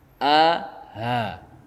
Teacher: Kalau hamzah itu tidak bernafas. Kalau ha bernafas.